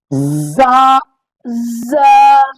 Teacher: دانتوں کو جوڑ کر سیٹی سے زا زا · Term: سیٹی والے حروف